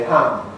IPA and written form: ham (ham)